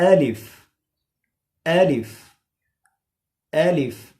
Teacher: खींचने अलिफ या गलत होगा और मोटा करना भी गलत होगा मुंह के खाली हिस्से से अदा होता है यानी मौत कैविटी से अदा होता है मौत कैविटी वह खाली · الف اس کو کھینچنا الیف یہ غلط ہوگا اور موٹا کرنا بھی غلط ہوگا · الف منہ کے خالی حصے سے ادا ہوتا ہے یعنی ماؤتھ کیوٹی سے ادا ہوتا ہے. ماؤتھ کیوٹی وہ خالی حصہ جہاں پر ہم کلی وغیرہ کے لیے پانی لے لیتے ہیں اور اس کو منہ میں روک لیتے ہیں، اس خالی حصے سے الف ادا ہوتا ہے.